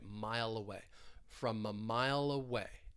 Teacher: From we're going to link that consonant sound with that vowel sound, from a mile away. It's like we're moving that L sound over to that schwa sound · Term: linking